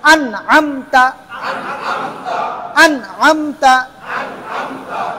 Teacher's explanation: নুন সাকিনের পরে কি আসছে আইন আইন তাহলে এখানে কোন গুন্না হবে না